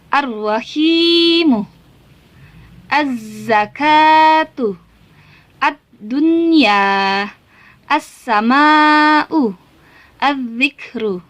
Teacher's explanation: Bertemu dengan huruf syamsiah, maka huruf alif lamnya hilang atau lebur, langsung masuk kepada huruf sesudahnya. Ya, jadi tidak ada lagi al-al-alnya. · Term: alif lam syamsiah